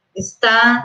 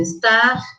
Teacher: E também a queda do R final nas formas verbais